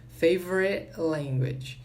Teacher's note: Muito bem, então esse favorite, essa última sílaba aqui, esse som do T, né? Ele vai ser bem reduzido, às vezes ele nem sai direito quando tem um language depois.